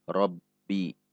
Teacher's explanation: Seperti tertahan sejenak karena sifat syiddah dari ba. Rabbi. Bi 1 harokat.